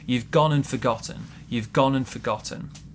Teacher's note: we have a big stress on gone and also a big stress on the pp word in this case forgotten